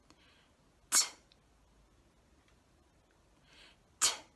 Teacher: how to produce the t sound which is a short sound to make the t sound we lift the tip of our tongue up behind our front teeth we turn our voice off